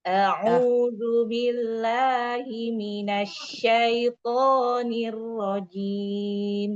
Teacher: Kalau nada pertama rendah.